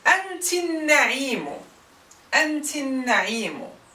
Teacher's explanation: So the Hamza and Fatha of the definite article will always be replaced by the final vowel of the preceding word.